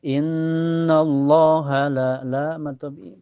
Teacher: di lafaz Allah ini dibaca tebal ya, dibaca tafhim karena sebelumnya berharakat fathah. · Karena ada alif sebelumnya harakat fathah di lam dibaca panjang dua harakat.